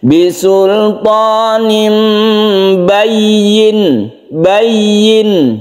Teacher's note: Kalau yang ini ikhfa syafawi, kalau yang ini iklab karena nun mati bertemu dengan ba, ini otomatis langsung berubah menjadi mim mati